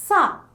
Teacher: When producing the sound, the blade of the tongue approaches the alveolar ridge, allowing the air to squeeze out, producing a hissing noise